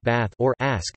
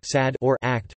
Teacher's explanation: It also adopts Philadelphia's pattern of the short a sound, such that the tensed vowel in words like bath or ask does not match the more relaxed one in sad or act